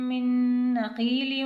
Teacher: اب یہاں پر نون ساکن کے بعد نون آ رہا ہے تو یہاں پر غنہ بھی ہوگا اور ادغام بھی ہوگا۔